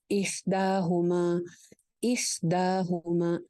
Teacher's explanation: دال کھڑی زبر دا، مطلب ایک الف لمبا ہو گیا